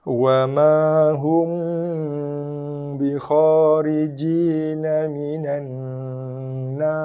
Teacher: kita ada dengung wajibul gunnah, nun sabdu, tekan pada nun